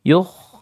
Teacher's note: Awwazanu tabi'i, hum juga tabi'i, nah yukh itu khanya isti'la dia ya, dia isti'la harus dibaca naik lidahnya, tafkhim kondisi apapun